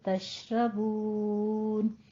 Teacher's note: तश में हमस करना है, थोड़ा शीन की आवाज में तफश्शी लानी है